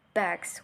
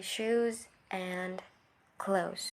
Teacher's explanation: the s sound is influenced by the previous sound and changes to a z sound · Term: progressive assimilation